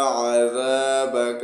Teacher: ذال کو سختی کے ساتھ نہیں پڑھیں گے نرم پڑھیں گے ذال کو پڑھتے وقت اپنی زبان دانتوں کے بیچ میں سے تھوڑی باہر نکالیں گے